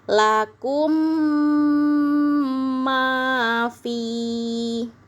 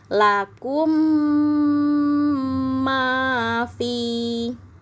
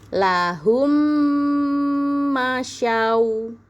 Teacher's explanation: Jadi disebut dengan idgham mimi. Kalau ada mim sukun bertemu dengan huruf mim, maka cara membacanya ditasdidkan ya. Mimnya itu ditahan yang lama ya. Mimnya ditahan yang lama disebut dengan hukum bacaan idgham mimi.